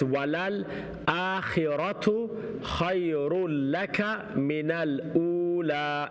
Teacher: Don't make the kaf long.